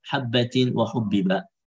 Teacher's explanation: ini sifat syiddah sama jahar di huruf ba